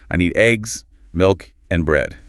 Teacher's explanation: Listing items might have rises until the last one.